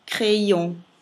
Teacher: io farò con la prima I un dittongo con la A che mi dà il suono E e il suono transitorio mi permette di legare la E con la O